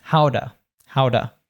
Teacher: So it becomes tuh. But then, because it's a T between two vowel sounds, between the -uh and the -ow of How - it becomes how-duh